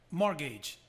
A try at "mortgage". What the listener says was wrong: Então você viu que ele não falou o T, ele acertou. Só que na realidade, essa palavra, a situação é na primeira sílaba. Então fica mortgage.